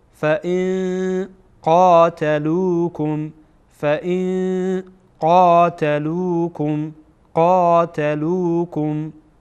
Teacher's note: بعد از نون ساکن که میبینید قاف آمده و قاف از حروف اخفا هست، بنابراین اینجا اخفا میکنیم